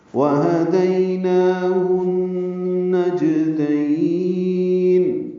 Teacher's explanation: واو ہونٹوں کی نا تمام گلائی سے، ہا اقصی حرکت سے، دی یا لین نرمی سے پڑھیں گے. نون کے اوپر کھڑا زبر ہونے کی وجہ سے 2 حلقات لمبا کریں گے.